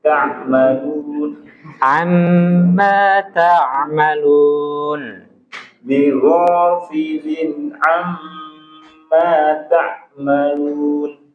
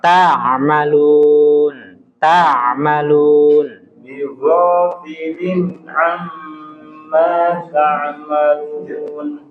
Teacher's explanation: Huruf ain dia pertengahan, nggak boleh terlalu kuat.